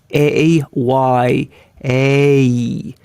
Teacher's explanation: you hear both vowels one transitioning into the other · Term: sliding vowel